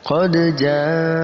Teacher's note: Qad kita pantulkan huruf dal.